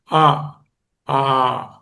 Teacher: ఆ అనేటటువంటివి నోటిలో ఏ విధమైనటువంటి భాగము అవసరం లేకుండానే కంఠం నుంచి పుడతాయి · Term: కంఠ్యములు